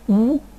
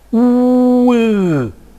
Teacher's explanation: we have to produce Cardinal vowel number 16 first of all Cardinal 8 with rounded lips ooh and then I will unround my lips